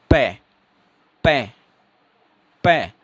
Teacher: जब आप पै बोलने की शुरुआत करेंगे तो जो हवा है वो अंदर ही रह जाएगी, लेकिन जैसे ही आपके होठ खुलेंगे तो हवा जो है वो सडन रिलीज होगी, एकदम से हवा बाहर आएगी। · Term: प्लूसिव